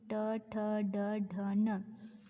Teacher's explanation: मूर्धा म्हणजे जो आपला आपण ट बोलताना जिथं आपली जीभ चिटकत आहे किंवा जिथे जिभेचा स्पर्श होतो आहे त्या स्थानाला मूर्धा असे म्हणतात. आता ट जिथे जिभेचा वरती टाळ्याला थोड्या पुढच्या साईडला जिथे टच होतो आहे किंवा स्पर्श होतो आहे त्याला मूर्धा असे म्हणतात.